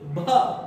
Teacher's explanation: भा जब बोलेंगे तो फिर उसमें से वायु निकलेगी, भा, और होठ आपकी चिपकेगी।